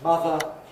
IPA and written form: ˈmʌðə (mother)